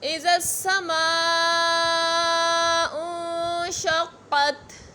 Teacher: میم پہ مد متصل ہے تو 5 الف کی مقدار تک کھینچ کر پڑھیں گے